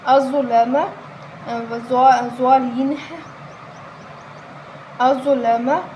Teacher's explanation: ضا حرف مستعلیہ ہے، پر پڑھیں گے